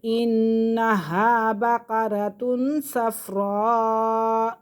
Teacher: یہاں پہ تنوین کے فوراً بعد صاد آ رہا ہے تو یہ اخفا میں سے یہاں غنہ کریں گے